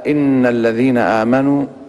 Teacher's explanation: إن حرف مشدد، حرف أغن أو غن مشدد، مقدار الغن فيه حركتين